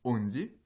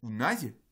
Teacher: Dans onzi, on a un O accentué, et dans unai, on a un OU non accentué.